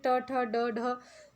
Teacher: ट वर्ग के ट ठ ड ढ जो वर्ण है, ये श जो है षट्कोण का, इनको बोलने के लिए हम मूर्धा का उपयोग करते हैं। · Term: मूर्धन्य